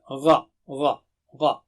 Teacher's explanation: اس کو باریک مت پڑھیے، مثلا غا نہیں پڑھنا ہے، غا اغ نہیں، یہ اونچا اور موٹا حرف ہے، اس کو کہتے ہیں مستعلیہ